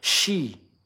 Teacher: Sin yang ada titik tiganya, shi. Itu ada udara yang menyebar di dalam mulut. Shi, ya. Beda sama si atau thi, ya.